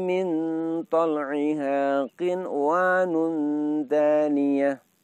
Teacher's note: nun sukunnya dibaca dengan suara jelas dengan pengertian dengungnya sedikit saja. walaupun bertemu dengan wawu tidak boleh diidghamkan karena bertemunya dalam satu lafaz. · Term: idhar wajib